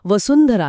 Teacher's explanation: शेवटच अक्षर आणि अनुनासिक न हे आहे >> नळाचा न आणि म्हणूनच वसुंधरा या शब्दातील अनुस्वाराचा उच्चार न सारखा होतो